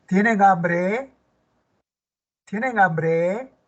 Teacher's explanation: Está empezando con un verbo, ¿ve? El tonema es ascendente.